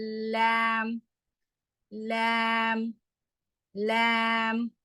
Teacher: நுனி நாக்கு. அது பாருங்க அந்த பல்லுக்கு உள்ள இருக்கக்கூடிய அந்த ஈர்களுக்கு அருகில் இருக்கக்கூடிய இடத்த வந்து தொடுது. அதுல சவுண்ட் வருது.